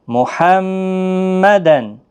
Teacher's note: تنوین کے بعد عین آیا حروف حلقی کا، اس لیے تنوین کو ظاہر کر کے پڑھیں گے